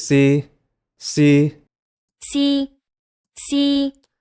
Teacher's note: This was our very first tone, the high flat tone